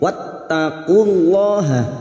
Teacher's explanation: lam jalalah yang didahului dhammah kita baca tafkhim